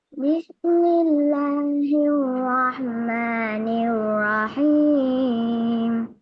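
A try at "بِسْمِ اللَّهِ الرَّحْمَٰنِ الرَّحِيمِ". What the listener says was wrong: Rendah tu. Bagi dia ringan. Bismillahirrahmanirrahim. Suara awak kecil. Jadi ambil tinggi sikit.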